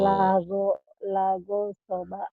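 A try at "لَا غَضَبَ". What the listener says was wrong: Lahnya tapi panjang.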